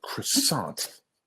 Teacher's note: So the stress is on the second syllable, croissant.